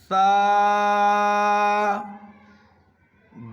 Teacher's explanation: زبان کی نوک تھوڑی سی باہر نکال کے اوپر کے چوڑے والے سامنے کے دانت میں لگائیں گے زبان کے نوک کو، اور آسانی سے یہ ثا ادا ہو جائے گا۔